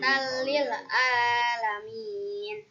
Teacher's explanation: Alasannya karena fathah tanwin bertemu dengan lam. Cara membacanya masuk tanpa mendengung. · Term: idgham bila gunnah